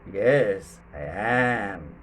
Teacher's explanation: am, though auxiliary, primary auxiliary, it is stressed